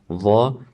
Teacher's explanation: the tongue is fully retracted, yet still touching the tip of our upper central incisors. So when you're pronouncing dha, the tongue won't be all the way sticking out and touching the upper central incisors.